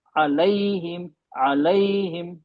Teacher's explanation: दोनों में जबान को बीच से उठाना है। जभी आवाज इ जैसी आएगी अदा इ में वो ए और इ के बीच में रह